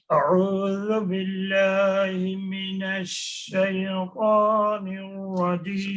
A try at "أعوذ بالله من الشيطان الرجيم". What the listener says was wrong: So see that release on the yeah. No, shay, stop that. Shaytan. Shaytanir Rajim.